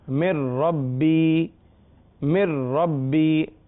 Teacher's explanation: اگر نون ساکن اور تنوین کے بعد را آ جائے تب بھی غنہ نہیں ہوتا